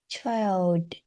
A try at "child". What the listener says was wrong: Yeah. Great.